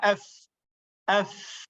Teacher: Dia angin keluar pada bibir yang hampir-hampir rapat.